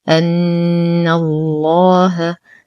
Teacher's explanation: نشد النون بغنة أكمل ما تكون. ننتقل من فتحة النون إلى تشديد اللام المغلظة في اسم الجلالة جل في علاه لأنها سبقت بفتح.